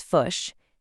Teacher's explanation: That short I sound, like in the word fish, it kind of flattens out and moves towards a U sound.